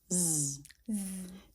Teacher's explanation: Z is voiced, meaning you make a sound with the vocal cords.